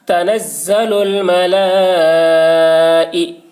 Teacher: تنزل الملا، اوپر مد، تنزل الملا، حمزہ زیر ای، حرف مد کے بعد حمزہ اسی کلمہ میں ہے، اس لیے مد متصل ہوا، مد متصل کو 3 یا 4 الف کے برابر کھینچ کر پڑھیں گے۔ تنزل الملائی، حمزہ کے نیچے زیر ہے، زیر کو جلدی پڑھیں، تھوڑا بھی نہ کھینچے، معروف پڑھیں، مجہول آواز سے بچیں۔